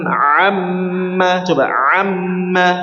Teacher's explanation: gunah musyaddad lebih dari dua harakat ya atau minimal dua harakat